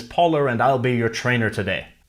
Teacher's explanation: people sometimes add an R sound to a word that doesn't actually have one if it's followed by a vowel in the next word. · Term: intrusive R